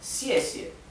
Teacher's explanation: la primer sílaba tiene el tono que cae que es el cuarto tono cie y la segunda sílaba es neutro no es cie no